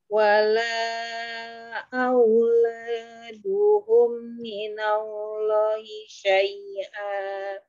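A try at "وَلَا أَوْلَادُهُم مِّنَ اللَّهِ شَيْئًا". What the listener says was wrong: Di Allahnya kurang panjang sih.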